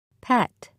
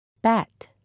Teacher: the first sound in each word is made in exactly the same way except one is voiceless and the other is voiced put your hand on your throat and repeat the sounds and